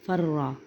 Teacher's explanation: تو یہ فرارا تھا، تو جب اس را کا را میں ادغام کیا تو یہ بن گیا فرا